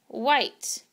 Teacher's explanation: has a little bit of a breathy sound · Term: wh phonogram